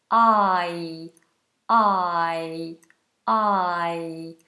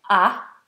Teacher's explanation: as we know is two vowel sounds we have ah ah quite open a and then e with the back of the tongue High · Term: diphthong